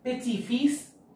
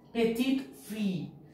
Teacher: As an e is added to petit, the t is also pronounced. Here the t is not pronounced.